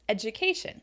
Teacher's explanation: It's stressed on the syllable before shun.